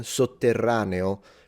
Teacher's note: Subterraneum, subterranean, in Italian, sotterraneo, because in Italian, when there is BT, we simplify it into a double T